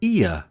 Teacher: we use the / j / sound as a link between the two vowels / ɪ / and / ə / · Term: linking sounds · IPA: / ɪə /